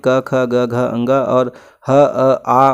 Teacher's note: कंठ से क, ख, ग, घ, अंग और ह, अ, आ और विसर्ग का उच्चारण होता है कंठ से